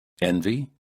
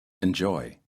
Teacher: The first word has a stressed first syllable and the e sounds like e. And the second word has an unstressed first syllable with the e sounding like uh